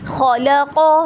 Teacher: لام کو لائٹ اور قو ہیوی